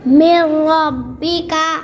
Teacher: ادغام بلا غنہ کیسے پڑھا جاتا ہے؟ جلد پڑھا جائے گا، نہ کھینچا جائے گا، نہ غنہ ہوگا